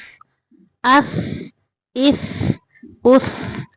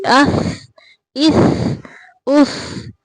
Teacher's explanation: यहाँ पे सा की अदायगी के वक़्त ज़ुबान की नोक को सनाया उलिया यानी ऊपर वाले सामने के दो दांत जो हैं उनके सिरे से लगाने से सा अदा होता है। तो साकिन करते हुए भी हम ज़ुबान को बाहर निकाल के यानी ज़ुबान को ऊपर वाले दांतों के सिरे से लगा के साकिन करेंगे।